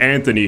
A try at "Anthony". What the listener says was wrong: It's Anthony. There's no H.